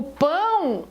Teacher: o pão o o tem som de u que é som de semivogal